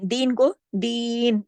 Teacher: दो हरकत खींचा हमने क्योंकि यहाँ पे या मद्दा है